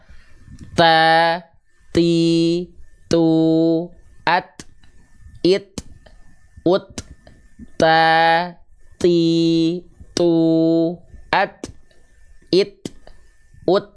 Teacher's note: Jadi bukan at. Enggak mengalir nafasnya. Nafasnya hanya berupa percikan-percikan nafas saja.